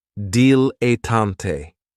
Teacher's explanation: And this word has three syllables. And there's kind of like a stress on that first and last syllable